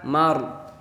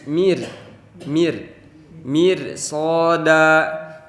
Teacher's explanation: Di sini ada kata mir ada huruf yang berharakat kasroh bertemu dengan ro yang mati, maka karena ro sebelumnya ada harokat kasroh, maka cara bacanya itu harus ditipiskan atau tarkik